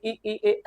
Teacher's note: इ ई ए ऐ जीभ के आगे वाले भाग से बोले जाते हैं। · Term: अग्र स्वर